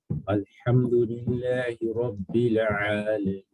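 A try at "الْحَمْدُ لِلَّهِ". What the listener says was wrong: Allow yourself to slow the lillah down. Lillahi. Right? So you're kind of you're shortening it too much.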